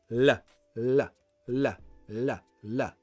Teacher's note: my tongue will hit the alveolar ridge you don't need to remember the name but the skin part behind the top teeth like here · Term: light l